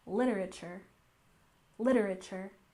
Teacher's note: literature we tend to say quite quickly with a stress on the first syllable